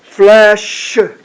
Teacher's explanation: 입으로 바람만 빼고 목이 울리면 안 된다.